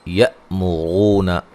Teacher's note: یا حمزہ کو جھٹکے سے ادا کریں گے اور رو واو مدہ ہے.